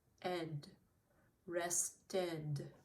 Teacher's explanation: So for these words, it adds the extra syllable, and the sound is ed